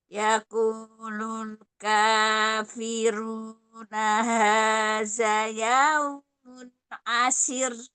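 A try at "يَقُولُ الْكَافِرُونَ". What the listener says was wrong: Yaqulu. Coba kosnya tebalkan lagi.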